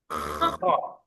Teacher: Ini seperti orang lagi ngorok gitu. Mau keluar ya, lebih tebal daripada yang ha. Kalau tadi ha, kali ini kho. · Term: hamas